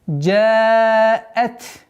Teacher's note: Хамза, чтобы не затерялась между звуками долгой буквы и та.